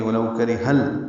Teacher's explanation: ہا کو لام سے ملا دیں گے ، ولو کرہ ال، لام ساکن ہے، اس پہ اظہار ہوگا،